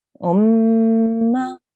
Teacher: So we will hold on the mim gunna for 2 seconds, and then we will make a 1 second sound for the fatha. So that will be pronounced as umma.